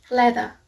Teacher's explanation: The next consonant is l, as in leather. Its voice sound, its place of articulation is alveolar, and its manner of articulation is lateral.